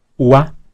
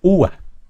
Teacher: puede cambiar un iato a un diptongo o viceversa por ejemplo ua es un diptongo pero si acentuamos la u Entonces sería ua Serían dos golpes de voz